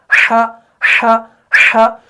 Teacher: हा जो है ये भी हलक के बीच वाले हिस्से से ही अदा होता है